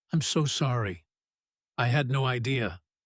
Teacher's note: The word so gets a noticeable stretch and a soft rise here